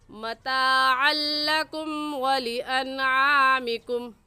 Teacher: मताअल लकुम की तनवीन पर भी गुन्ना नहीं करेंगे और वलिअनआमिकुम की नून साकिन पर भी गुन्ना नहीं करेंगे